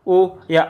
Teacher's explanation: ओ या औ का उच्चारण स्थान कंठोष्ठ से होता है